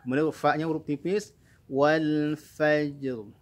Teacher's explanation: Huruf lam punya sifat tawassud, di antaranya alirkan sedikit saja huruf lamnya wal, ya. Kemudian fa-nya huruf tipis, wal fajr.